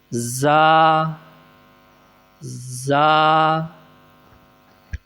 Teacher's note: زبان کی دونوں سائڈیں اوپر والی داڑھوں کے ساتھ ملائی جائیں گی اور زبان کی نوک سے ادا ہوگا